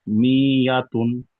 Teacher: তানবিনের আওয়াজ নাকের মধ্য দিয়ে তাড়াতাড়ি পড়তে হয়